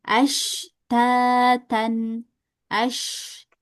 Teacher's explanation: Huruf syin itu dibaca dengan rakhaah dan tafasyi. Rhawah itu ngalir banyak.